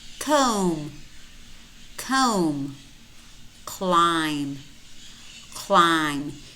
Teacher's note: in many of these words we have MB clusters. And in these words, normally the B is silent. We only pronounce the M.